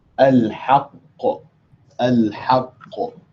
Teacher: the qaf is essentially pronounced twice. You are not pronouncing one qaf with sukoon, you're pronouncing two qaf with sukoon. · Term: qalqala